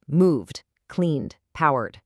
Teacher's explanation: But if the base verb ends in a voiced sound, like the humming n in clean, the ed assimilates to a voiced d sound. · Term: assimilation